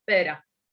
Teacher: lo que vemos es una R simple, un flap, ¿no? Pera.